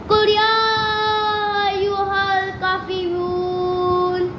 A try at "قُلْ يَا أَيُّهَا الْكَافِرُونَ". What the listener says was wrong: قل يا أيها الكافرون. سپر فاسٹ ہے لیکن کاف کو لانگ کرنا ہے.